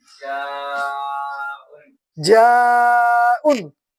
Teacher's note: بڑا مد ہے، جو بڑا مد کے کتنے حرکت کے برابر کھینچیں گے؟ 6 حرکت کے برابر کھینچیں گے